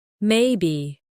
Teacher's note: the voice might stay flat or rise slowly.